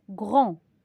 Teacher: Je dis grand, mais j'entends pas la lettre D, mais je dois l'écrire. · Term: lettre muette